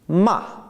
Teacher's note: the Chinese word for curse or scold is ma, same syllable, but with a falling sound to it.